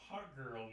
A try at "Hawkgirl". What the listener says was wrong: not Hot Girl. It sounds like Hot Girl, but it's Hawkgirl.